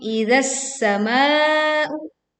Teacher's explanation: Kita meleburkan alif lam ke huruf sin sehingga bunyi alif lam tidak terdengar. Idza as-samaa'u langsung ditekan ke huruf sin dengan bunyi yang tipis dan seruit tajam saat sin ditekan dan kita meleburkan alif lam.